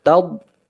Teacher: Kemudian dad huruf tebal atau huruf isti'la, maka diucapkan dengan rahang yang jauh, taub, tetapi nafasnya betul-betul tertahan, udara tertahan, suara pun tertahan, taub, ya. Kita merasakan nanti tepi lidah kita menyentuh gusi gigi kita, ya, taub, ya.